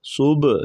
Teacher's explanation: ہا گلے سے ادا کریں گے، باریک آواز